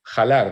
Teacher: aspirando fuertemente la H hasta convertirla en J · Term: aspiración de la F